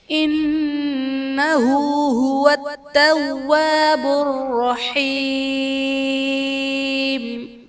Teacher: انہو میں نون مشدد ہے، یہاں پر غنہ کر کے پڑھیں گے